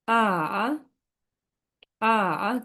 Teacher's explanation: 3 নম্বর tone falling rising tone, নিচে নেমে আবার উপরে উঠবে স্বরটা।